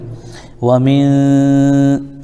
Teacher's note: حروف اخفا میں سے شین آ رہا ہے اس لیے ایک الف ناک میں آواز کو روکیں گے ہم